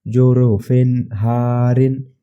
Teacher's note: یہ رو کو 2 زیر ہے اسی لیے ہم باریک پڑھیں گے